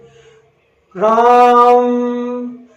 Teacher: रा को हमने लंबे समय तक खींचा तो या ऊंचे स्वर में जिसको जब बोला लंबे स्वर तक तो वह कहलाएगा प्लूत।